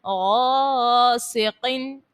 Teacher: غین اور قوف دونوں کو پر پڑھنا ہے